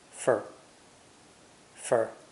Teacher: the word for is unstressed and pronounced fer